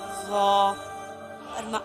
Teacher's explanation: نرمی کے ساتھ پڑھیں گے۔ زبان کی نوک جب اوپر والے 2 دانتوں کی نوک سے لگے تو اس کو کیا پڑھتے ہیں؟ ضا۔